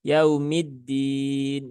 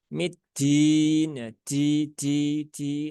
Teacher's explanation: dalnya itu tidak ada sifat hamsnya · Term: sifat syidah